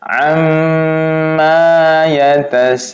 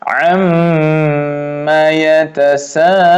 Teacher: ditahannya yang dua harokat tuh hanya menahannya. Tapi ketika melepasnya itu tidak dua harokat tapi satu harokat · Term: tahan lepas